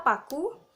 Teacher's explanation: Selanjutnya adalah pada bunyi kontoid. Kata paku, huruf P mati, oral, bersifat bilabial, dan plosif